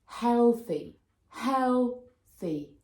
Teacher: there are two syllables, and the stress is on the first syllable. So you say that sound a bit louder, with a bit more stress than the other syllable.